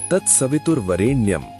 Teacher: सवितुर में वी पर जोर, वरेण्यम में रे पर उद्दात।